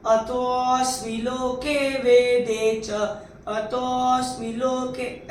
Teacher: ये अवग्रह होता है, इसमें एक विलुप्त अ होता है। तो इसको हम थोड़ा खींच के बोलेंगे